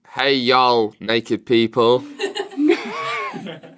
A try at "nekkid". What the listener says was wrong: Now, I heard naked distinctly. Which is appropriate in some parts of the United States. Naked. Naked. Naked.